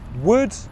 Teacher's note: Short English vowel sound. Mouth is almost completely closed. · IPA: /ʊ/